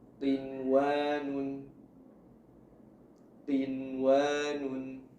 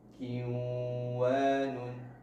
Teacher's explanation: Di antaranya ialah izhar hakiki, yaitu apabila hukum idgham bi gunnah terjadi dalam satu kata, atau mudahnya nun sukun bersambung dengan huruf idgham bi gunnah, maka membacanya menjadi izhar, ya, nunnya dibaca jelas